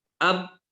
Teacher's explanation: Kenapa ba itu tertahan? Karena dia syiddah. Ya, syiddah.